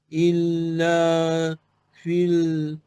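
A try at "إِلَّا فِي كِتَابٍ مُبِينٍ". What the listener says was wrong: fi jangan tambahlah fi kitab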